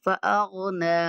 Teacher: یہاں پہ بھی نون کے اوپر کھڑا زبر ہے، تو نون کو ہم نے لمبا کرنا ہے۔